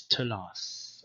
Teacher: the second th is retained because the sound was retained after vowels and it became an allophone of the t. So the t or tau has two different pronunciations, t and th, but these are basically the same phoneme.